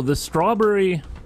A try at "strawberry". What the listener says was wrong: You say strawberry weird. It's almost like, yeah, like you got a it's like you got a U in the berry instead of an E.